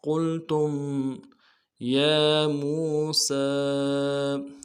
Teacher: وَإِذْ قُلْتُم قاف کو موٹا ادا کرنا ہے، لام کو ساتھ ملانا ہے، تا کو میم ساکن کے ساتھ ملانا ہے، میم ساکن میں غنہ کریں گے۔